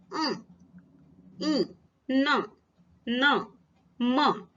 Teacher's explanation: इसका उच्चारण करते समय हमारी मुख से निकलने वायु मुख और नाक दोनों से बाहर निकलती है, इसलिए इसे अनुनासिक व्यंजन कहते हैं।